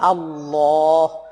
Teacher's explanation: আল্লাহ মোটা করে লামকে উচ্চারণ করতে হবে